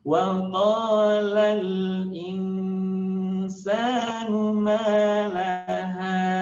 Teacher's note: Tahan, tidak tergesa-gesa memasukkan ke rongga hidung, kemudian nunnya samarkan antara nun dan sin.